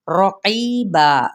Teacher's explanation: रा के ऊपर ज़बर है, पुर पड़ा जाएगा।